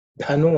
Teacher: dhanu again is the aspirated fourth letter